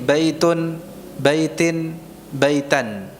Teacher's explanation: Ini kita mengucapkan tanwinnya dengan nun sukun ini dalam keadaan wasal saja. Ya. Hanya ada di dalam pelafalannya, nun sukunnya itu ada pada pelafalan saja.